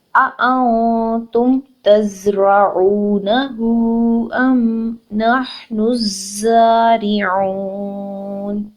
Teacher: نون ساکن کے بعد تا آ رہا ہے، لیٹر آف اخفا. نون ساکن کی جو نون ہے اس میں نون کی آواز کو ہم نے ناک میں چھپا لینا ہے